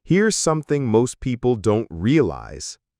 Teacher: slight fall on most people. then rises again on don't realize to signal that something interesting is coming. · Here's something most people don't realize. Starts with a rise. Here's something slight fall on most people. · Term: intonation pattern